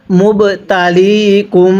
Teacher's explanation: এই বাটা আমরা ধাক্কা দিয়ে পড়ব কারণ বাটি হল কলকলার হরফ